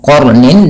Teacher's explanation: Kemudian ketika kita melafalkan qarnin, ya, qarnin, di sini qa-nya tebal dan ro-nya juga dibaca dengan tebal